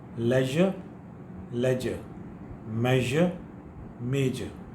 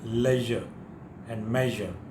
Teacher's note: In the leisure and measure, you feel a sort of vibration if you touch your throat like this. Leisure and measure.